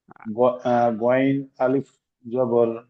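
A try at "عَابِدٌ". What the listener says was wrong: গয়েনের উপরে একটি নোক্তা থাকে, এখানে আইন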